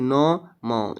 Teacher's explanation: नाक और मुंह दोनों से हवा अगर निकल रही है आपकी तो क्या है वो होते हैं हमारे अनुनासिक